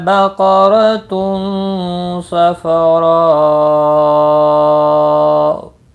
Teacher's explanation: قاف مستعلیہ ہے، پر پڑھا جائے گا، رو زبر کی وجہ سے پر پڑھا جائے گا۔ تنوین کے بعد حروف اخفا میں سے ایک حرف صاد آیا ہے، اخفا حقیقی ہوگا، گنہ کے ساتھ پڑھیں گے۔ را زبر کی وجہ سے پر ہوگا، مد متصل ہے، اور وقف کی صورت میں مد لازم ہوگا، 5 الف کے برابر کھینچ کر وقف کریں گے۔